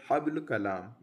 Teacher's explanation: اس صفت کا مطلب یہ ہے کہ ان حروف کو ادا کرتے وقت زبان کی جڑ اوپر کے تالو کی طرف نہیں اٹھتی، جس کی وجہ سے یہ حروف ادائیگی میں باریک رہتے ہیں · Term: صفت استفال